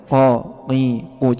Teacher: Kalau qof maka qi ada unsur goncangannya, ada unsur pantulannya.